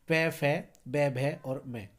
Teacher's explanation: ये ओष्ठ वर्ण कहलाते हैं क्योंकि होठ से बोले जाते हैं। जब आप बोलेंगे पै पै तो पै जब बोलेंगे तो दोनों होठ हमारे आपस में टकराएंगे।